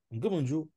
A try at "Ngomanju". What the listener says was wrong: Ngomanju, le coup de glotte doit ressortir. Ngomanju. Coupe le coup de glotte là vite. Ne fais pas nju ou. Non, dis seulement nju. Ngomanju.